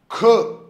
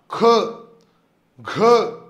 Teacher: ख चा उच्चार करत असताना शेवटी ह चा उच्चार झाल्यासारखं जाणवतं का? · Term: महाप्राण